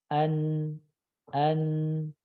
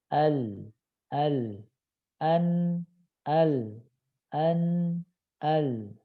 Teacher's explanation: ujung lidah ngangkat dan nempel dengan langit-langit depan · Nun sama lam itu makhrajnya sama, berdekatan. Ujung lidah nempel dengan langit-langit depan. Huruf nun. An.